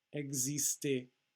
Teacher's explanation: the x is actually a voiced z sound